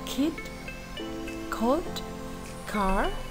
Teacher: sounds produced with the back of the tongue